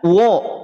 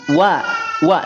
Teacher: wau tipis berbeda dengan lam jalalah lam jalalah menjadi tebal